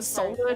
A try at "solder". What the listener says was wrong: You're not supposed to pronounce the L. The solder.